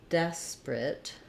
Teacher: Okay, we had a request for the word desperate, and this is another example of where it may look like we say desperate, and it's not incorrect to say it with 3 syllables, desperate, but you will hear people say it more like desperate with just 2 syllables. We kind of dropped this middle schwa sound, so the IPA would be de with a F vowel, des, and maybe a schwa there, desperate.